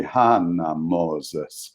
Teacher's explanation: the stress on the first syllable in the Hungarian language